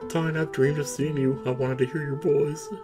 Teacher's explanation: listen to the vocal fry. It's so bad.